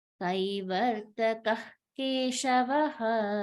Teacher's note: When the Ka Varga is there, we lift the sound and drop it. We don't chant that Visarga.